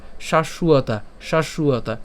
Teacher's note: আর বর্গীয় ব এর উচ্চারণ কার মত হয় উ এর মত হয়